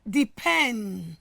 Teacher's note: the stress has moved from the first syllable into what? The second syllable. Just in line with the earlier explanation I gave about stressing a noun and a verb.